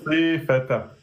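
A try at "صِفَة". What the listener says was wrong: non, tu as mis une prolongation. Toi, tu dis sifata. Juste là, tu as mis une prolongation. Sifata. Nous, on veut sifata.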